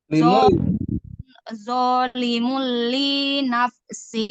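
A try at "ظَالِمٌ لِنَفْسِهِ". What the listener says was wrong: Li nafsi, jangan jangan panjangin. Zalimul li nafsi.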